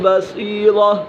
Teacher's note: صاد پورا حرف مستعلی میں سے، اور را بھی پورا ہے کیونکہ را کے اوپر زبر ہے